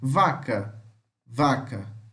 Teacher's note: V, fricativa lábio-dental sonora